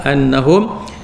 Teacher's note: Walau annahum, walau lau tu maklin, sebab sebelum waw ada fathah, annahum atas nun ada syaddah, wajib al-ghunnah, wajib dengung